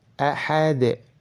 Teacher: Ahad, haknya dibaca pendek. Dan dalnya itu harus dipantulkan ketika dalam keadaan sukun. Nah, entah itu sukun asli maupun sukun karena diwaqafkan.